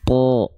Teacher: huruf-huruf tebal ketika dia berharakat fathah dia dibaca dengan vokal condong pada vokal o